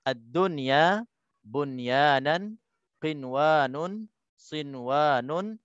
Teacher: Wajib diizharkan, cara bacaannya kita izharkan, wajib diizharkan bunyi nun sakinah tanpa dengung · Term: izhar mutlak